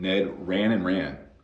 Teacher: if we're speaking fast we'll cut that d